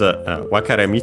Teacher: wakarei which by the way is accented on the re